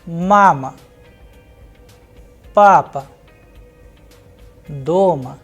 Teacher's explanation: once the stress is falling onto a the next vowel which is o will sound like ah so a short weak sound